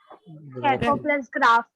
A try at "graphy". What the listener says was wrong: ग्राफी। मैंने सिखाया ना, इसका प्रोनाउंसिएशन ग्राफ नहीं है, ग्राफी।